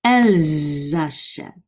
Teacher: hear that liaison between the S and the A